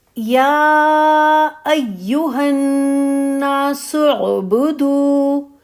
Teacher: یا پہ مد ہے، ٹھیک ہے، تو یا کی مد کو آپ 4 کاؤنٹ تک لے جائیں گی